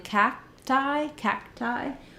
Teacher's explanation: in cacti cacti we have kind of an unreleased K